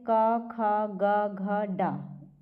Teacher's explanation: क वर्ग में जितने भी आते हैं सब कंठ से उच्चारण होता है उसका।